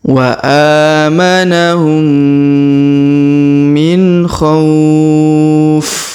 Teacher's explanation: pertemuan mim dan mim lagi, huruf dengung, maka kita tahan dan tekan 2 sampai 3 harokat dengan dengung ya